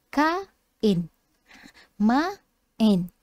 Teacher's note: dua huruf vokal duduk sama kan, duduk sebelah. Tapi kita sebut dia terpisah. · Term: vokal berganding